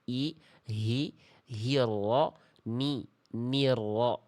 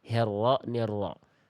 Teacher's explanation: Jangan sampai miring ke vokal e.